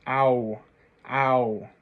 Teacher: You can see I kind of start with almost a smile, but it shapes down to that tight O. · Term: ow sound